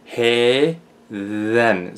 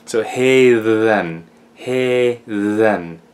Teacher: So we have a macron ash, which makes an eh sound, and then we have the thorn or eth, depending which letter you like. Anyway, in this case, because it's between two vowels, it becomes a voiced th.